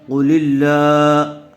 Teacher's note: قاف کو پر کر کے پڑھیں گے۔ لفظ اللہ کی لام سے پہلے والے حرف کے نیچے زیر آیا ہوا ہے، اس لیے لفظ اللہ کی لام کو باریک پڑھیں گے، پر نہیں کریں گے۔